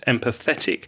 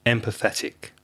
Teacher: you need to stress the third syllable